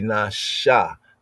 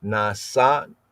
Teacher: the S is not pronounced as a S, but as a sh